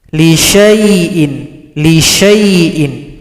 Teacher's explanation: Di sini ada lagi bulat lingkaran sifir mustadir, menghilangkan tanda panjang, shin dibaca pendek, langsung gabung pada huruf ya.